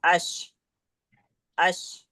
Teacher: शीन का मखरज जबान के बीच, उसके मुकाबिल ऊपर के तालु से